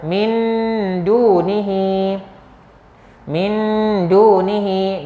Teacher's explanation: Ya, nun sakinah selepas ni diikuti dengan dal. Ini nama hukumnya ikhfa hakiki dan kadar bacaannya adalah sebanyak dua harakat.